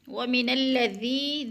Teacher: یا ساکن سے پہلے دال کے نیچے زیر ہے تو یا مدہ ایک الف کے برابر کھینچ کر پڑھنا ہے